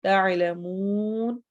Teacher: تعلمون واو مدہ، اور چونکہ وقف ہو رہا ہے اس لیے یہاں پر ایک مد بھی ہوگی جس کی وجہ سے ہم اس کو تھوڑا زیادہ لمبا کریں